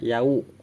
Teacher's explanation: Wawu sukun itu bunyi suaranya u bukan o, jadi jangan yao, tapi dibacanya yau.